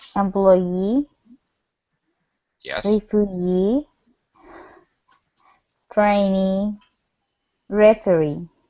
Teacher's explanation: every time she comes to the E part her pitch Rises · she pronounces the long e sound so she stretches it she even says it a little bit louder